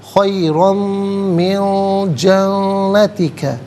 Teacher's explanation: خیرم من جنتک، جنتی کا میں نون مشدد ہے، جماؤ کے ساتھ پڑھیں گے، غنّے کے ساتھ ادا کیا جائے گا